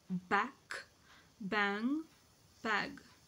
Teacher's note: the active articulator is the back of the tongue and the passive articulator is the soft pallet